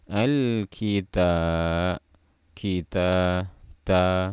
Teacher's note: Di sini ada huruf ta. Makhrajnya di ujung lidah bertemu dengan pangkal gigi seri atas